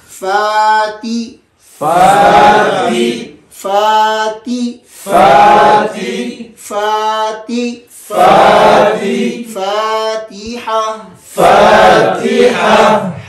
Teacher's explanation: فا کے اندر ہمس بھی ہے اور رخوت بھی ہے، اس میں سانس بھی جاری رہے اور آواز بھی جاری رہے